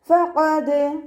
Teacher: മേലെ മുൻപല്ലിൻ്റെ അറ്റവും താഴെ ചുണ്ടിൻ്റെ നനഞ്ഞ ഭാഗവും ചേർന്നിട്ടാണ് പുറപ്പെടുന്നത് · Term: ഫ മഖ്റജ്